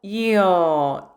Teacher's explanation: 이의 자리에서 시작해서 어의 자리에서 끝나요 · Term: 이중모음